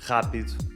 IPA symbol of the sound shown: R